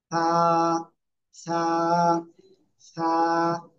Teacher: জিব্বার আগা, এই দুই দাঁতের আগে লাগাবো, লাগিয়ে হালকা বাতাস বের করো, বের করে জাস্ট একটা আলিফ টানিয়ে আমরা উচ্চারণ করবো।